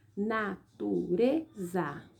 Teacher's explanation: a sílaba tônica está em penúltimo lugar · A palavra natureza, a sílaba tônica dela está em penúltimo lugar e ela é classificada como paroxítona, tá?